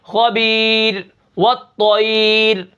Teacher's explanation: اس را کو ہمیشہ باریک پڑھنا ہے اگر پیچھے یا ساکن آ جائے